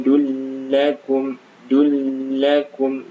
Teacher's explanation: Dullakum, nah ini tanwin dhammah bertemu lam, adalah idgham bila gunnah, maka jangan ditahan ya. Dullakum, dullakum, jangan terlalu lama.